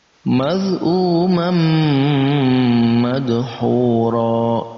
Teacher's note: Nah, di sini kita bertemu tanwin bertemu dengan mim, maka masuk dalam pembahasan idgham bi gunnah. Kita baca dengan digabungkan antara tanwin dan mim, ini kita gabungkan lalu kita dengungkan